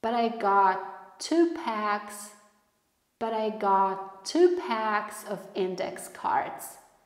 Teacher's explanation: w słówku got, ale nie wypuszczamy powietrza, robimy pauzę i mówimy to.